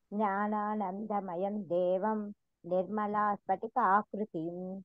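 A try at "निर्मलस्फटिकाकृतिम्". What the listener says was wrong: నిర్మలా కాదు, నిర్మల స్ఫటికాకృతిం. అసలు అక్కడ గ్యాప్ ఇవ్వకూడదు. చూడండి, జ్ఞానానందమయం దేవం నిర్మల స్ఫటికాకృతిం.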